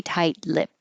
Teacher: This is weird because the ed d sounds like a t lipped, but you won't hear that final t if it's at the end of the sentence or phrase or there's a consonant after it